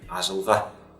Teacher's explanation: Не ажылга, взрывная, а щелевая задняя, ажылға. И не щелевая передняя, как, например, сейчас продемонстрирую, переднюю щелевую, ажылға.